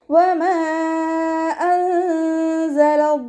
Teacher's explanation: വാവ് ഉച്ചരിക്കുന്ന സമയത്ത് ചുണ്ടുകളെ സർക്കിൾ ചെയ്ത് പിടിച്ചു കൊടുക്കുക. മീമിൻ്റെ കൂടെ മദ് വന്നു, മദ്ദക്ഷരത്തിന് ശേഷം അടുത്ത വേർഡിലായിട്ടാണ് ഹംസ വന്നിട്ടുള്ളത്.